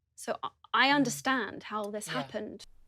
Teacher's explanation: Notice the long /æː/ sound in the word 'understand'